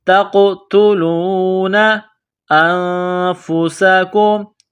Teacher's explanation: قاف ساکن ہے تو یہاں قاف پر قلقلہ کریں گے، جھٹکا دیں گے